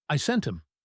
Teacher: Often, the H drops and the T blends.